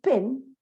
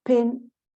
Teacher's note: We cannot produce aspiration in Spanish unless we are taught, we are trained to produce aspiration. So a word like pin, that is produced with aspiration, might sound as bin.